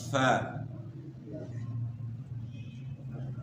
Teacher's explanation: فا کا مخرج جو ہے اوپر والے دو دانت اور نچلا ہونٹ، نیچے ہونٹ کا شکم اور اوپر کے دو دانت، یہ فا کا مخرج ہے، یعنی نچلے ہونٹ کا پیٹ اور اوپر کے دو دانت۔